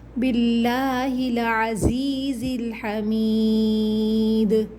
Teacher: آخر میں دال حروف قلقلہ ہے، آواز پلٹ کر آئے گی